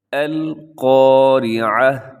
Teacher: سب سے پہلے القاریعہ، یہاں پہ حرف قاف لکھا ہوا ہے جس کے اوپر دو نقطے ہیں۔ قاف کو ہمیشہ موٹا پڑھا جاتا ہے، اس کو اپنے باریک نہیں پڑھنا۔ آگے را زیر ری، یہ را باریک ہوگا کیونکہ را کے نیچے اگر حرکات ہوں تو را باریک ہوتا ہے، اوپر ہو تو را موٹی پڑھی جاتی ہے۔